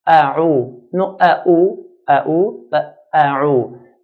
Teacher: Alif, ayn and then dal. Alif is pronounced from the bottom part of the throat, bottom part of the throat, and ayn from the middle part.